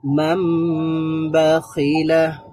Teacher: মাম আমরা যখন ম বলবো তখনই এটা গুন্না হয়ে যাবে। আমার নয়ের মতো সাউন্ড করার প্রয়োজন নেই, এটা এমনিতেই গুন্না হয়ে যাবে।